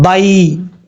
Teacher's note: اس کو لانگ نہیں کرنا کیونکہ یا لین جو ہے وہ لانگ نہیں کیا جاتا. یا لین کا مطلب ہے اس کو لمبا نہیں کریں گے.